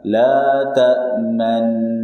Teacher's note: bunyi nu-nya dihilangkan tapi monyongnya masih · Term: Ishmam